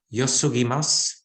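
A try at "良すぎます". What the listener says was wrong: Yeah, good.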